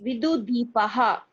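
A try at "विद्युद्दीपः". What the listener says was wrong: Not Vidu. The letter is, second letter is not Du. Yeah, in fact, there's a mistake in that word. It must be Vidyud Deepaha. Vidyud Deepaha. Okay, the word should be Vidyud Deepaha.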